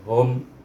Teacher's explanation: dibaca mim mati ini dibaca dengan izhar syafawi, tidak ada dengung-dengung, hum terus berhenti macam tu · Kalimah hum ha baris depan hu, itu ingat pangkal hukum kalimahnya, mahrajnya ha, dan dimati dengan huruf mim untuk bibir, iaitu hum.